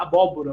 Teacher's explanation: neutraliza-se a oposição entre as séries alta e média posterior né então eh sempre vai ser realizado como u